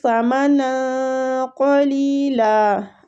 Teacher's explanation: نون کی جو تنوین ہے نا اس کو ہم تنوین کو اخفا کے ساتھ پڑھ رہے ہیں، مطلب چھپا کے